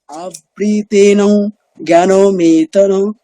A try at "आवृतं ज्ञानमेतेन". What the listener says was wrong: হচ্ছে না তো আবৃতম জ্ঞানমেতেন কিছু কিছু জায়গায় মানে ভুল হচ্ছে, মানে দীর্ঘ উচ্চারণগুলো করছেন না, ঠিক আছে?